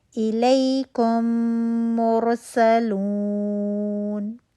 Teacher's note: اس ملانے کی ساری آواز ناک سے آئے گی اور 2 حرکات کا غنہ ہوگا، ٹھیک ہے، 2 کاؤنٹ ہم غنہ کریں گے۔ · میم ساکن آیا، اس کے بعد نیکسٹ جو لیٹر تھا وہ میم تھا، میم میم میں مرج ہو گیا، مشدد ہو گیا، 2 کاؤنٹ کا غنہ کر رہے ہیں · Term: ادغام شفوی